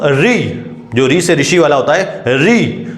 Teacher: आपकी जो जीभ है ऐसा लगता है कि तालु को छूने वाली है